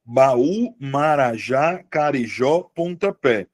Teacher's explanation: Carijó tem a sílaba tônica no final, Marajá também tem a sílaba tônica no final. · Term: oxítona